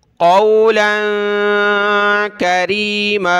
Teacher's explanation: وَلَا تَنْهَرْهُمَا وَقُلْ لَهُمَا، اور کہیے ان دونوں کو، وَقُلْ لَهُمَا والدین کے سامنے آپ نے کہنا ہے قولا کریما. یہاں لام پر ناک میں آواز پیدا ہوگی، لام دو زبر لام.